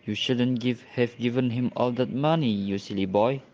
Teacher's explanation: Jadi pada kata you shouldn't have given itu seperti menggerutu. Kemudian pada kata yang akhirnya all that money you silly boy itu nadanya meninggi. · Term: take-off intonation